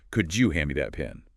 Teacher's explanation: Often becomes, could you hand me that pen? The D and Y sounds blend into a J sound.